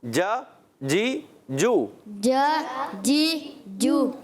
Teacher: जीम की अदायगी में चे ना हो। आप जब पढ़ें जीम क्लियर होना चाहिए।